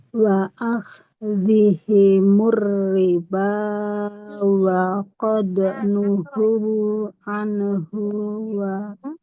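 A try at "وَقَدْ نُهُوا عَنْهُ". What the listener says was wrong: Haknya panjang atau tidak? Yang anhu, haknya pendek.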